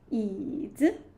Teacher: you can feel that 椅 third tone actually is a low tone